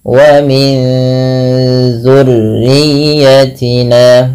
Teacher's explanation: Kalau izhar itu jelas, kalau idgham itu memasukkan, maka ikhfa di antara keduanya, itu masukkan ke zal, ya, nunnya masukkan tapi disamarkan ke zal. wa min dzu, seakan-akan langsung menafalkan daripada huruf zalnya, sembari ditahan.